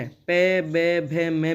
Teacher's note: प, ब, भ, म में हमारे होंठ एक दूसरे को टच कर रहे हैं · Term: ओष्ठ्य ध्वनियाँ